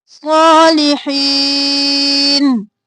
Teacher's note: صاد موٹا اور کھڑی زبر ہے کھینچا. لی جلدی سے.